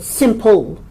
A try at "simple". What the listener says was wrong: So the ul at the end is coming out simple, people, which is very common with Chinese speakers.